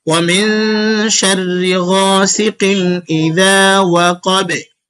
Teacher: ওয়াওয়ের সময় ঠোঁট গোল থাকবে, পরে মিলে যাবে